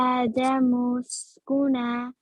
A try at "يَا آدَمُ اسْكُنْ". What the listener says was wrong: No, there's no fatha here. So sukun. Uskun. Ya Adam uskun.